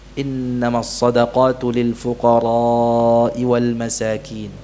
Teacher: dengan memanjangkan kata “al-fuqara’,” beliau memanjangkannya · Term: mad wajib